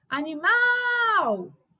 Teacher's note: reparem que o mal foi o que mais se estendeu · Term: sílaba tônica